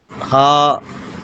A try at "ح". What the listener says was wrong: ہا کو حلق سے نکالیے.